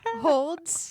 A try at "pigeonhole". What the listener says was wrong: Pigeonhole. No, you said D. You put a D on the end.